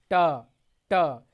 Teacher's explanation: आप जब बोलते हैं तो आपका जीभ जो है मूर्धा से टकरा रहा है, जिस स्थान को जीभ टच कर रही है उसी स्थान को मूर्धा कहते हैं।